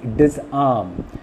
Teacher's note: Now disarm is not a negative word, and that is the reason why the second syllable arm is stressed.